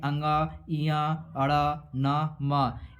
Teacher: ये सब व्यंजन नाक की सहायता से बोले जाते हैं इसलिए इन्हें हम नासिक व्यंजन के नाम से भी जानते हैं